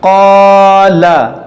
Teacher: الف سے پہلے موٹا حرف ہے, حرف مستعلیہ ہے, تو اس الف کو بھی موٹا کریں گے, اس قاف کو بھی موٹا کریں گے, اور یہ الف مدہ بھی ہے, اس کو کھینچیں گے.